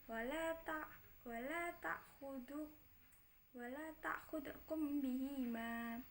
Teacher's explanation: ikhfa syafawi sebab mim sukun bertemu huruf ba